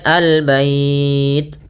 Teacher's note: alif lam yang ditulis dan lam tersebut dibaca dengan jelas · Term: alif lam qamariyah